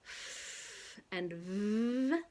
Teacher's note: two labiodental consonants, f and v. Those are both fricatives. · consonant sounds in which the air continuously flows over the point of constriction, the place of articulation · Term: Fricative consonants